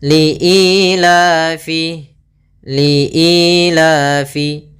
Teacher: Jadi 'li' dan 'la' harus memiliki panjang yang sama. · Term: Mad Thabi'i